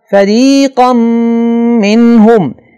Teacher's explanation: فَرِيقًا مِّنْهُمْ نون تنوین کے بعد ینمو میں سے میم آ رہا ہے لہذا یہاں پہ نون تنوین کی آواز کو میم میں اس طرح مکس کر کے پڑھیں گے کہ غنہ ہو جسے ہم ادغام کہتے ہیں